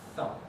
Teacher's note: an English style TH sound, a voiceless dental fricative, as we call it, to say thumb.